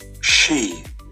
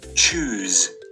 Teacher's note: the tongue is placed just behind the alveolar ridge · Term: Post-alveolar